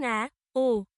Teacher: নিম্ন মধ্য স্বরধ্বনি। এসব স্বরধ্বনি উচ্চারণের সময় জিভ উচ্চ মধ্য স্বরধ্বনির তুলনায় নিচে এবং নিম্ন স্বরধ্বনি থেকে উপরে ওঠে, যেমন অ্যা, ও।